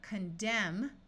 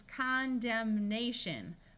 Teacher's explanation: Here we have condemn with a silent N, but when we add the letter A and the suffix shun, it becomes condemnation, where the N sound is clearly heard.